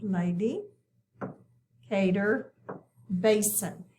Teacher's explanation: we accent that first syllable in each one